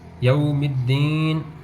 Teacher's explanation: واو ساکن سے پہلے زبر، یہ حروف لین میں سے ہے، تو یہاں پہ ہم اس کو نہ تو لمبا کریں گے نہ جھٹکا دیں گے، بغیر کھینچے بغیر جھٹکا دیے نرمی سے اس کو ہم پڑھیں گے، یوم الدین۔